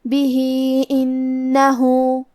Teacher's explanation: کلمت بھی کے آخری میں ہا کے نیچے کھڑی زیر ہے لہذا یہاں حکم ہے مد صلہ صغرا. ہم اپنی آواز 2 مد کے برابر لمبی کریں گے · کلمت انہو میں نون پہ تشدید ہے لہذا ہمیں تشدید کو ظاہر کرنا ہے اور 2 حرف کے برابر حرف النون کو پڑھیں گے